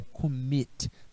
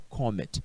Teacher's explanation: se a minha sílaba tônica é a última, que eu chamo de oxítona